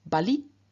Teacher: Now the neuter has in the singular nominative, vocative, accusative the form bali, where basically the final n has just dropped